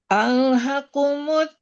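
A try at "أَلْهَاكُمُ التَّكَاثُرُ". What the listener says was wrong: Alha panjang ha.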